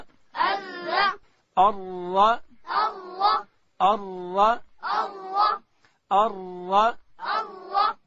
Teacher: را ادا کیږي چې کله د ژبې کناره لوړې اوري ته وروړو، دلته حرف را ادا کیږي.